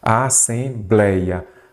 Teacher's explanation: a sílaba forte é a penúltima, então aqui eu tenho uma palavra paroxítona. Olha o ditongo aberto aí, gente, não recebeu acento.